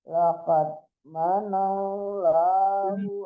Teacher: laqad dipantulkan dalnya, man tasdid nunnya.